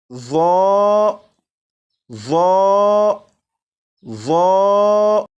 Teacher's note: इस हर्फ को पुर यानी मोटा भी पढ़ेंगे, क्योंकि ये हर्फ हरूफ मुस्तालिया में से है। और आपको मालूम है कि हरूफ मुस्तालिया को हर हालत में पुर यानी मोटा पढ़ते हैं।